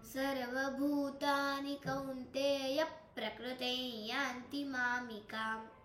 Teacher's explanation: कौंतेय आणि पुढे प्र आलेला आहे त्यामुळे य वर जरासा जोर घेतला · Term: आघात